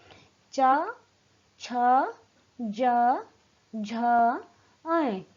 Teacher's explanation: इनका उच्चारण तालु से हो रहा है, यानी कि इनका उच्चारण करते समय हमारी जीभ का भाग तालु को स्पर्श कर रहा है। इन्हें स्पर्श संघर्षी व्यंजन भी कहा जाता है। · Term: च वर्ग